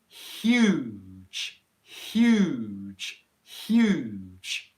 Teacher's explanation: how the h sound doesn't have any noise before you actually get to the vowel sound that comes as you make the h sound and what's very